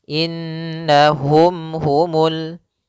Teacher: nunnya berharokat tasydid, maka kita namakan dengan bacaan gunnah. Maka kita tahan dulu suara nunnya. Baru dibaca na.